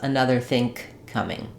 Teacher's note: Another think coming, I'm going to stop that ng sound in think and go right to the k of coming. So if you want to be extra clear, you can say two K sounds.